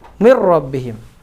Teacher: Zat dan sifatnya huruf nun hilang secara sempurna. Tidak disisakan satupun. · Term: masuknya sempurna